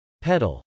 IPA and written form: pˈɛdəl (pedal)